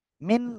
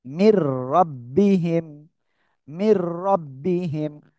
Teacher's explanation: আমরা মিম রজের মির গুন্না করব না, জাস্ট মিলিয়ে পড়বো